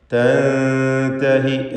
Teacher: തൻതഹി എന്ന പദത്തിൽ സാക്കിനത്തായ നൂൻ ഇഖ്ഫാ ഹഖീഖി നൽകി മറച്ച് മണിക്കണം · തൻതഹി എന്ന് നൂനിനെ അവ്യക്തമാക്കി മണിക്കുക